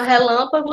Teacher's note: Todo mundo sabe que o lã é a sílaba tônica, portanto é uma proparoxítona, leva acento.